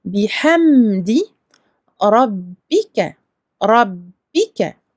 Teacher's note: On emphatise le ra, parce que fatha. On double le ba, et on prononce le ka tout à fait normalement, un seul temps, et maftouh.